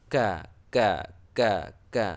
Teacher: dalam arti kata keluar angin sedikit ya ka ka ka ka ada sedikit angin yang e tipis · hamas itu tidak jahar, dalam arti kata keluar angin sedikit ya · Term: Hames